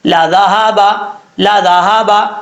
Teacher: ذال بغیر سیٹی کے ساتھ پڑھا جائے گا، ہا بھاری ساؤنڈ کے ساتھ پڑھا جائے گا، لا ذهب لا ذهب.